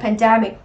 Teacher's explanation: chúng ta sẽ có trọng âm rơi âm tiết thứ 2